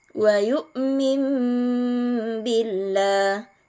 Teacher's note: dengan huruf ba nah hukum tajwidnya adalah iqlab wa Billah jadi Nun sukunnya berubah menjadi huruf mim dan disertai dengan dengung